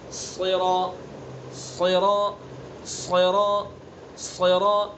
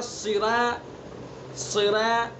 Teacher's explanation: پر کرنے کا طریقہ یہ ہوتا ہے کہ زبان کا جو پچھلا حصہ ہوتا ہے اس کو اوپر تالو پر لگاتے ہیں